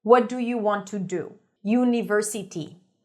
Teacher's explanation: Syllable timed. Every syllable receives the same beat.